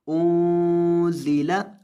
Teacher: यानी नून की आवाज़ को नाक में ले जाकर गुन्ना के साथ पढ़ेंगे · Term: इख्फा